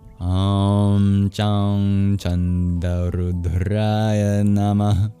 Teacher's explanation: the O's are always long in Sanskrit, as is the A in Rudraya. At the end of Namah, there is a little exhale known as a visarga, symbolized by an H with a dot under it.